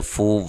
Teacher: فو واو مدہ ہے، ٹھیک ہے، فو، اور اس کو بھی 1 الف کی مقدار کے برابر لمبا کرنا ہے۔